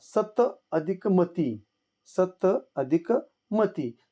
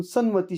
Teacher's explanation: त च्या पुढे म आल्यामुळे त्या ठिकाणी त बद्दल न होतो म्हणून सन्मती शब्द तयार होतो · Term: अनुनासिक संधी